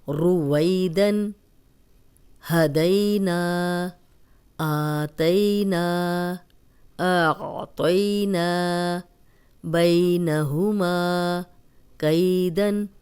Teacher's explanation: جزم والی یا پیچھے زبر، یائے لین، اس کو بغیر کھینچے نرمی سے پڑھتے ہیں، لمبا نہیں کرنا